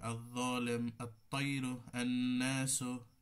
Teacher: এইভাবে আগের শব্দের সাথে পুরোটা আমরা ইদগাম করে, লাম পুরোটাই বিলুপ্ত করে দিয়ে ইদগাম করে পড়বো এই হরফগুলোতে